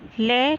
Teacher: हमारी जिह्वा दांत के जो पीछे मूर्धा वाला स्थान है वहीं पे स्पर्श करती है और जिह्वा वहीं रहती है, और जो साउंड है वो बाहर निकलता है, इसलिए इसको कहेंगे मूर्धा। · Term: पार्श्विक